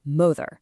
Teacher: Like, when we say mother, we don't say mo-fur. We put extra force on the very first part, mother.